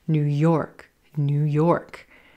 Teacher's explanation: Again, emphasis on the word York, not New York.